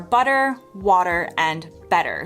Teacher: In most American accents, a T sandwiched in between two vowels often gets softened into a sound between a T and a D